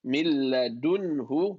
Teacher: It meets a lam in the next alphabet. A lam and ra, no gunna. Merge without any gunna.